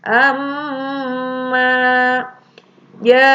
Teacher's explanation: Amma itu karena ada sidah, itu adalah gunnah, ditekan 2 harakat